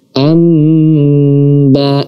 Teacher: Nah, di sini nun mati bertemu dengan ba kita baca secara dengan menutup kedua bibir, tidak memberi celah sedikit pun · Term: iqlab